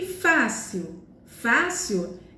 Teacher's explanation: a penúltima sílaba que é mais forte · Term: paroxítona